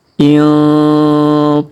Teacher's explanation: Huruf nun sukun bertemu ta, maka kita dengungkan dan kita samarkan ya. Intaliqu. Huruf ku kita panjangkan 5 harokat karena di atasnya terdapat garis tanda bacaan panjang 5 harokat yang ini.